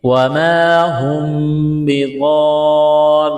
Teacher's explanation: میم ساکن کے بعد با ہے تو یہاں پر اقلاب کریں گے، آواز ناک میں چھپائیں گے